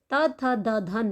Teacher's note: ता, था, दा, धा, ना का उच्चारण स्थान भी दंत से होता है